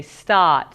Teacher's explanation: A BOSTONIAN MIGHT SAY START, SO IT'S A LITTLE BIT MORE OPEN, A LITTLE BIT MORE FORWARD, THE TONGUE IS A LITTLE BIT MORE CUPPED. IT'S NOT A SOUND THAT WE HEAR IN MANY OTHER AMERICAN ACCENTS IN THAT PURE FORM, SO IT'S PRETTY UNIQUE, THAT ONE.